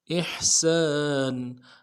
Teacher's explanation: سین کے ساتھ الف مدہ ہے، ایک الف مدار میں کھینچیں گے